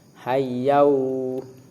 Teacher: karena tanwin bertemu dengan wawu, jadi membacanya yau bukan yan.